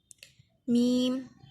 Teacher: ये दोनों होंठों के खुश्क हिस्से से अदा हो रहा है।